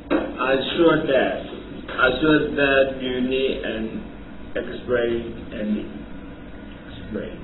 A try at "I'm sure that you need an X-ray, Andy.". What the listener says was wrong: 不 是 你 这 个 读 的 ， 你 没 发 现 你 这 个 ▁I ▁am， ▁你 这 个 ▁M ▁都 没 有 了 。I'm ▁sure， ▁这 个 ▁I'm ▁有 一 个 这 个 鼻 音 ， 对 不 对 ？ Yeah， ▁I'm ▁sure ▁that ▁you ▁need ▁an ▁X-ray， ▁Andy。